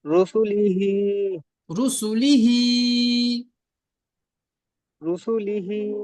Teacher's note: রর উপর পেশ আছে, পেশটিকে হারাকত বলে, হারাকতের পর তাড়াতাড়ি পড়তে হয়, টান দেওয়া নিষেধ।